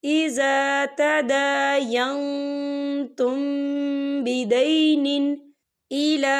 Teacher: यहाँ मीम साकिन है और मीम साकिन के बाद जो है बा आ रहा है, तो यहाँ पर इक्फा शक्फी होगा और हम यहाँ गुन्ना भी करेंगे।